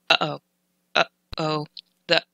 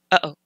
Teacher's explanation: the space in between uh and o like uh oh that is a glottal stop